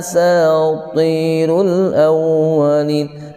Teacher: au baca au posisi bibir manyun